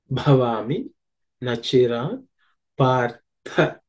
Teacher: The first word is bha. The bha is the fourth letter in the pavarga. So it has to be aspirated with some exertion.